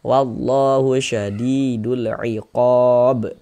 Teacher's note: Kenapa kok disebut izhar qamariyah? Karena huruf lamnya dibaca jelas.